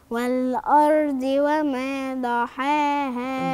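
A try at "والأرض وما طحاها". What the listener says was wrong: ض ولا طا؟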